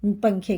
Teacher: تنوین یا نون ساکن کے بعد حرف اخفا آوے تو نون کی آواز کو ناک میں چھپا کر پڑھنا چاہیے، نون زبان تالو سے ہٹا کر، زبان کی نوک تالو سے ہٹا کر، جیسے اردو میں پنکھے کے نون کو پڑھتے ہیں۔